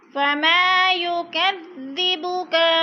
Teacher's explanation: فما الف مدہ کو ایک الف کے برابر کھینچ کر پڑھنا ہے.